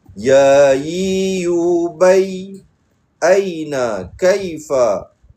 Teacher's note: di bahagian tengah lidah dinaikkan ke bahagian langit keras